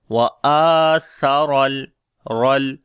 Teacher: Ra we read in heavy sound, and we connect with the lam.